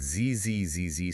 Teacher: That ZZZZ sound creates localized vibrating friction right at your teeth. It acts as a boundary.